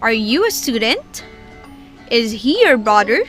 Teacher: then we have yes or no questions rising intonation